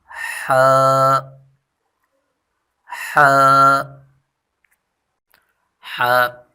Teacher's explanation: وسط حلق سے ادا ہوتی ہے، یعنی گلے کا بیچ والا حصہ جو ہے وہاں سے ح ادا ہوتی ہے، اور زبان کو تھوڑا پیچھے کھینچ کر ادا کریں۔